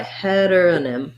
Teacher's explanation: The T ends up being a flap, so it sounds kind of like a D.